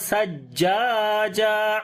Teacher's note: سا کو نرم پڑھیں گے، جیم کے اوپر شد ہے، تھوڑا آواز کو سٹرونگ کریں گے، جیم کو لمبا بھی کریں گے، الف مدہ ہے اور یہاں پر جب رکیں گے تو ایک زبر پڑھی جائے گی اور ایک زبر ختم ہو جائے گی۔